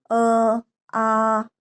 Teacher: अब स्वर में देखो, ये अ और आ। अ और आ का जब हम उच्चारण करते हैं तो वो गले से बोले जाते हैं, कंठ से बोलाए जाते हैं।